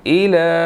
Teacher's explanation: لام کو ہم نے تھوڑا سا لمبا کرنا ہے، اس کے اوپر کھڑی زبر ہے، 1 سیکنڈ کھینچ کر پڑھیں گے